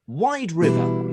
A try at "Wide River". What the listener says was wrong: Not wild, wide. River.